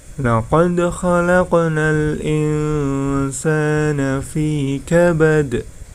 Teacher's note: laqad. Ya, di situ terdapat bacaan qalqalah, berarti harus dipantulkan